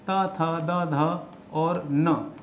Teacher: ये त वर्ग है, दांत से बोला जाता है